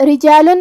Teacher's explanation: کلمت رجال میں یہاں را کے نیچے زیر ہے. یہاں حرف الرا کا حکم ہے ترقیق، تو ہمیں را کو پتلی آواز میں پڑھنا ہے. آخری میں لام پہ تنوین پیش ہے.